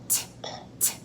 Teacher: That's because it's a quiet sound. T, t. We don't use our voice. Put your hand on your throat for this word.